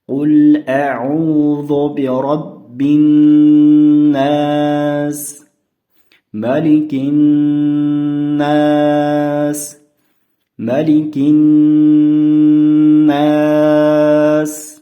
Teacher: S harfini oxirida sekin to'xtaymiz, oqizib to'xtaymiz hamda s harfini qattiqroq chiqaramiz.